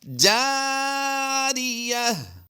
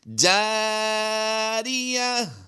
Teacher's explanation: تنوین کو ہم نے وقف میں ہا ساکن سے بدل دینا ہے